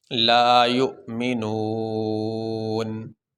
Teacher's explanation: طرح زبر پڑھا جائے گا، لیکن ہم وقف کریں گے کیسے، لا یؤمنون، ایسے ساکن کر دیں گے، یہ زبر نہیں پڑھیں گے